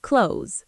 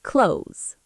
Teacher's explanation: It sounds like close with a Z sound at the end